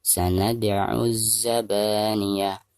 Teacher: Sanad dal sukun posisinya ada di tengah-tengah bacaan, dihukumi qalqalah sugro dan cara membacanya harus dipantulkan dengan suara pantulan yang tipis.